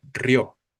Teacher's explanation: Entonces si la palabra en este caso eh no tiene acento significa que la vocal tónica será la fuerte la o